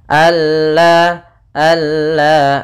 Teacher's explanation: juga kita sebut di sini juga idgham Kamil idgam yang sempurna idgham Kamil yaitu nunnya hilang langsung kepada huruf lam